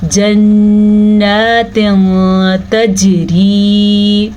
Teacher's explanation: यहाँ पे इख्फा का कायदा हो रहा है, हमने नून तनवीन की आवाज़ को छुपा दिया है।